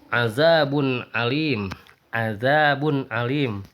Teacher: Maksudnya adalah bunyi nun mati atau tanwinnya jelas tanpa berdengung sedikit pun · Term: ijhar